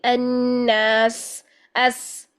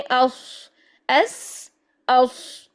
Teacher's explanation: सीन की सफ़ीर जो होगी वो बारीक होगी सीटी, और सौद की जो सीटी है वो मोटी होगी